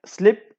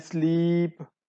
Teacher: These long and short sounds of a same vowel would also be called as the allophones, like slip and sleep. E sound is pronounced shortly in slip, while it's elongated in the next word sleep.